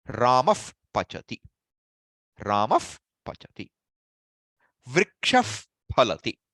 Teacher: you don't pronounce the visarga as that ha sound. You make it a F sound. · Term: upadhmaniya